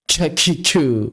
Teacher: Memindahkan makhrajnya tengah lidah dan langit-langit bagian depan. Ciku cu mencampur dengan suara qof.